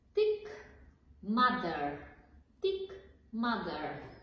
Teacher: Разликата между тях и Т и Д е, че при Т и Д езика е зад зъбите, а при произношението на тези два звука между зъбите